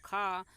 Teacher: स्पर्श व्यंजन कंठ ध्वनि, अघोष और महाप्राण ध्वनि है।